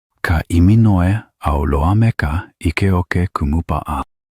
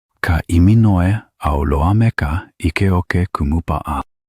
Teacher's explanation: The name features several glottal stops, which are brief pauses in the breath between the vowel sounds.